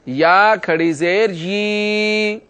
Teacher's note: اس یا کو ایک الف کے برابر لمبا کر کے پڑھیں گے۔